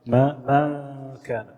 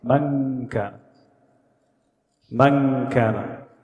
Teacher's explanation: When I say ما كان, my tongue is down. The correct way you pronounce in the ikhfa gets your tongue, the tip of your tongue up a little, slightly.